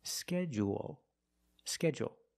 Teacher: in both pronunciations we end with a dark L because the L is after a vowel at the end of the word